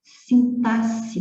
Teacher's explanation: você pronuncia o X como se fossem dois S's